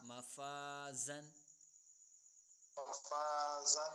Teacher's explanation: اب یہاں پر مفازن پہ فا الف زبر فا، کیونکہ فا باریک ہے تو الف بھی باریک پڑھا جا رہا ہے، یعنی مفازن